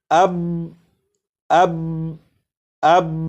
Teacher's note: با کو پڑھنے کے بعد آواز کو تھوڑی دیر کے لیے روک لیا ہے